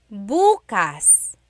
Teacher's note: If you say buas emphasis is on the first syllable that means tomorrow